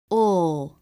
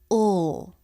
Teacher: Instead, it's down, touching the back of the bottom front teeth. The back part of the tongue pulls back towards the throat. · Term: dark L